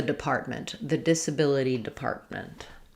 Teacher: when we have MENT or ANCE right after a T in the middle, we tend to just use an unreleased T there. Depart, I go up to make the T, depart, and then I just release into the M, department.